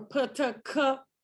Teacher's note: when the articulators come apart there's a small burst of air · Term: oral stop